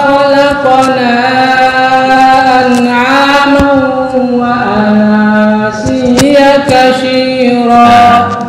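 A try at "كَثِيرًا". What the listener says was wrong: Bukan kasyira tapi katsira fi. fa fi bukan shi, fi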